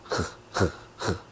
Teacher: 이 소리가 나오는 목구멍이 작아집니다. 작아지면서 떨림을 만들어요. 연하게. 흐, 흐, 흐. 이렇게. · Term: 에흐